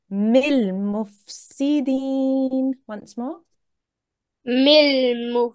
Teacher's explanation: you just say the lam and then you move on very quickly after that. You don't hold on the lam.